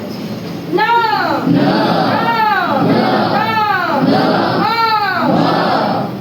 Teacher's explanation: हे जे उच्चार आहेत ना हे नाकाची पोकळी वाजते त्यातून ते स्वर आले